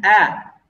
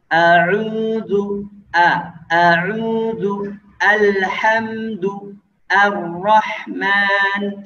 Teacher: alhamdu, al, tidak boleh o. Cara bacanya a, nggak boleh o